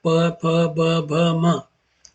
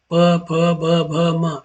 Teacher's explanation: इनमें दोनों ओठ आपके सट जाते हैं